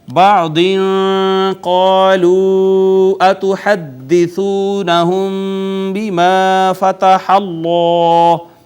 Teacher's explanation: قاف حروف مستعلیہ میں سے پر کر کے پڑھا ، الف مدہ، پھر مد منفصل، اور اس کے بعد واو